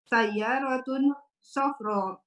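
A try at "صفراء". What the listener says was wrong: Nah, jangan lupa ya, safra'u begitu.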